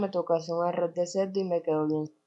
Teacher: la variación de las consonantes líquidas R y L implosivas, fenómeno popularmente conocido como el golpe cartagenero o el hablado golpeado